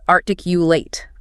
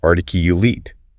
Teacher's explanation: the verb is articulate, long A. But the adjective is articulate, short I.